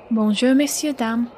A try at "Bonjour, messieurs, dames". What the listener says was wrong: And note that you don't pronounce the R in messieurs like that. It's messieurs. Bonjour, messieurs, dames.